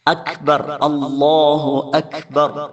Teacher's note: ആ ഒരു കാഫിന്റെ ഉച്ചാരണത്തിൽ ചെറിയ ഒരല്പം ശ്വാസം പുറത്തേക്ക് പോകണം ആ രൂപത്തിൽ പറഞ്ഞാലേ കാഫ് ആവുകയുള്ളൂ അക്ബർ അള്ളാഹു അക്ബർ അങ്ങനെ ചെറിയ ഒരല്പം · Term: ഹംസ്